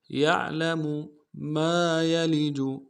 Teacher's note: میم کے ساتھ الف مدہ ہے، ایک مقدار میں کھینچیں گے، یا کو نرم سے ادا کریں گے، لام کو نرم سے ادا کریں گے، جیم کو نرم سے ادا کریں گے۔